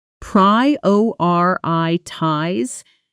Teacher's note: Prioritize, the strongest beat on the second syllable. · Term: stress pattern